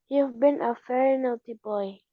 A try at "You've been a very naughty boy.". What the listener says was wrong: Nah, ini ferry-nya. Kalau bilang ferry, itu alat transportasi ya, kapal ferry. V-nya kalau dalam bahasa Indonesia, dalam bahasa Inggris itu beda dengan bahasa Inggris. V-nya pita suara harus bergetar. V, very. Beda dengan F, posisi lidahnya sama.